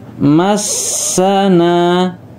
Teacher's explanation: Wa ma-nya panjang, massana ditekan ke huruf sinnya ada tasdid ya atasnya, na-nya panjang ya, sama dengan yang ma tadi, mat tabi'i fathah depan ada alifnya.